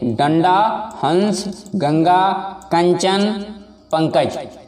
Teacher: अनुस्वार में जिस वर्ण का उच्चारण करते समय हवा केवल नाक से बाहर निकलती है उसे अनुस्वार कहते हैं